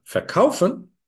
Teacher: the word stress is on kauf. It's never on the inseparable prefix.